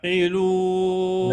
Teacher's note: اريد العين عميقه وكانه عم تبلع شي وتحس بانزعاج في المخرج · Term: العين الساكنه